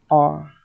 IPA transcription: ɚ